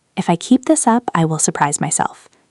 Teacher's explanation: Notice how keep this almost blends into one sound and will surprise flows together smoothly. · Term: natural linking, linking